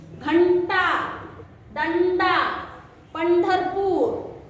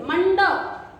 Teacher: जीवा का आगे का हिस्सा ऊपर जाता है, इसलिए इसे मूर्धन्य कहते हैं।